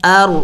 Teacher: ہلائیں گے نہیں، سکون ہے، جم کر کے پڑھیں گے